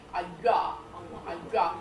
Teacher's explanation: So it's a y sound, but with rounded lips. And the y sound is the palatal bit, the rounded lips is the labial bit.